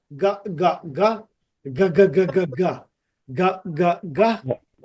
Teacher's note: জিহ্বাটা লেগে যাচ্ছে বাট সাউন্ডটা এখানে ভাইব্রেট হচ্ছে